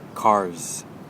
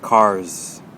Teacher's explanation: air blowing through, just like a regular Z sound